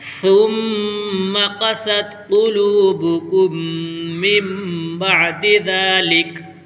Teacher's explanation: سین میں سیٹی نکلتی ہے اور سا ہلکی سی آواز میں نکلتا ہے۔